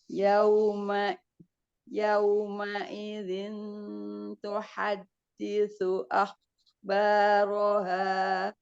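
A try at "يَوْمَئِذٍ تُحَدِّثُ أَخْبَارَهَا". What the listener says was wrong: Jangan diputus, ada sukun-sukunnya. Nah, ini diangkat. Yau. Itu masih diangkat. Yauma idzin tuhaddisu akhbaraha. Jadi, upayakan ketika dia bukan isti'la itu lidahnya tidurin.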